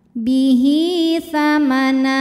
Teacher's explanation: Hi hukumnya adalah mad silah qasirah sebab ada hak dhamir yang diapit 2 huruf hidup dan huruf setelahnya bukan hamzah, bukan a, bukan i, bukan u. Cara bacanya, ha dipanjangkan 2 harokat.